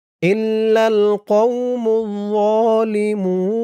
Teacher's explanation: অক্ফ করার কারণে পেশের পরে ওয়াও সাকিন এক আলিফ টানটা ৩ আলিফ হয়ে গেছে